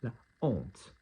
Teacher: We're not saying l'honte, we're not joining it together. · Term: aspiré